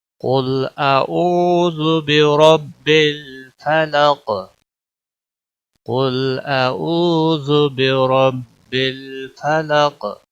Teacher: फलक वक़फ़ की सूरत में क़ाफ साकिन होगा और क़ाफ मोटा भी पढ़ा जाएगा और वक़फ़ की सूरत में इसके ऊपर कलकला भी होगा